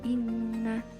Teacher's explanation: maka harus dibaca inna disertai dengan dengung, tidak boleh dibaca dengan ina atau tidak dengan bertasydid. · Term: gunnah musyaddadah